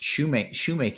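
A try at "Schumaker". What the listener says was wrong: No. Because it's shoemaker, but there's no R. So you just take off the R. So then it's shoemaker. It's shoemaker. It's shoemaker.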